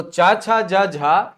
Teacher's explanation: स्पर्शी होने के साथ साथ संघर्षी व्यंजन भी होते हैं